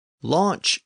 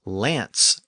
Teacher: Launch is the Norman version of the word with the CH sound at the end, and lance is the Parisian word with the S sound at the end.